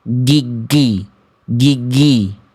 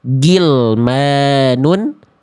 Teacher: Rakhawah itu artinya suara yang mengalir. Kalau teman-teman melafalkan gin jadi g suaranya jadi mampet enggak ngalir lagi.